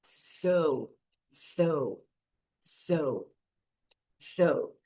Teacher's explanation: com a língua estando entre os dentes você solta uma voz · você fala como se fosse zou, o Z, com a língua presa no céu da boca.